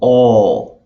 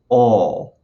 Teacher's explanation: then suddenly your jaws you're going to feel your jaw drop you're going to feel your jaw drop a little bit and your tongue is going to come way back down in your oral cavity